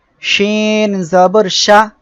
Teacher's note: শিন অক্ষরটি জিহ্বার মাঝখান তার বরাবর উপরে তালুর সঙ্গে লাগিয়ে শিন অক্ষরটি উচ্চারিত হয়